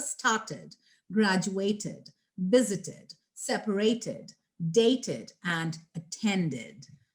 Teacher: So when the word is ending with a T or a D, then of course you can go ahead and break them into two syllables, and then the sound at the end is going to be with id or ud